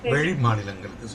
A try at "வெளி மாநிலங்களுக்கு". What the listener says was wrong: இன்னும் கொஞ்சம் நாக்கு உள்ள இருக்கு, நீங்க ரெண்டுக்கும் நடுவில் வைக்கிறீங்க. வெளி வெளி வெள்ளம் அவள், வெளி மாநிலங்களுக்கு சொல்லுங்க.